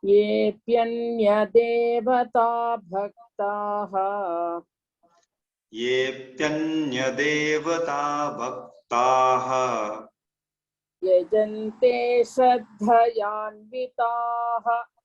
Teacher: Here bhaktaha, shraddha, vidhi, all mahaprana should be there.